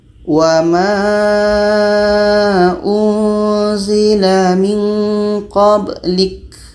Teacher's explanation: Ba mati tidak ada hamasnya, tidak ada anginnya. qablik, yang ada qalqalah.